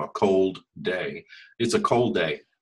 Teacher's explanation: It's like only one of the D's gets pronounced.